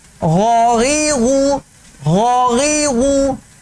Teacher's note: یہ غین اور خا ہیں, یہ دونوں اس حلق سے پڑھے جاتے ہیں, حلق کے اس حصے سے پڑھے جاتے ہیں جو منہ کی طرف ہے, جو حلق کا حصہ منہ کی طرف ہے.